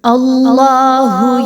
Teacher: اللہ، حرف جلالہ سے پہلے والا حرف حمزہ، اس پر زبر آ رہی ہے، تو اللہ کو خوب موٹا کر کے پر کر کے پڑھا جائے گا. منہ کو گول کرتے ہوئے، منہ کو بھاری کرتے ہوئے پڑھا جائے گا